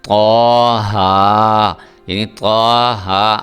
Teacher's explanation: ہا پوری طرح ہا ہے، آپ کے جو سینے کی آواز ہے وہ نکلنی چاہیے، پھر ہا ادا ہوگا۔